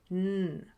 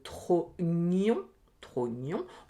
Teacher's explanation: Le ñ, ça vient vraiment du fond de la bouche. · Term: le son ñ